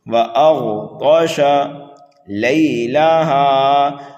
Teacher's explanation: یہ غین حروف مستعلیہ میں سے ہے، پر کر کے پڑھیں گے۔ طا بھی حروف مستعلیہ میں سے ہے، پر کر کے پڑھیں گے۔ · طا بھی حروف مستعلیہ میں سے ہے، پر کر کے پڑھیں گے۔ شین کو جلدی پڑھیں گے۔